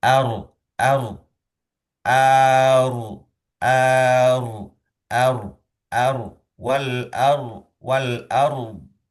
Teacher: Jadi di sini ada peralihan dari tipis yaitu A kemudian ke tebal yaitu huruf ro sukun.